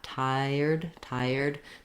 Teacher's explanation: as my tongue pulls back into that IR position for the American R we do get a natural gliding sound